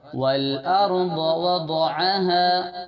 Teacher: ضاد کی آواز موٹی ہونا ہے